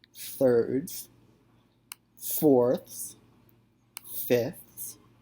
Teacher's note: you can hear at the end of these I'm adding a th sound